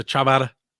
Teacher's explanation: it's just the d but it sounds like the rolling r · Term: d trick